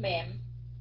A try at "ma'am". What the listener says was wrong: Ma'am. Ma'am. Dạ, kéo dài chút xíu, ma'am. Không phải mẹ, không phải mẹm nha, ma'am.